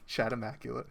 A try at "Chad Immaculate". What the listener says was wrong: Are you sure it's not pronounced as Chad? Chad.